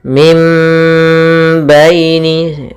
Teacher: suara nunnya diganti dengan suara mim dan kita tahan gunnahnya. Mim baini, gunnahnya 2 harakat. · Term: iqlab